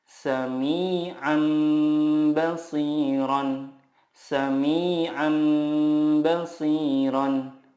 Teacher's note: cara membacanya mengganti nun sukun dengan mim sukun dan disertai guna 2-3 harokat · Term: iqlab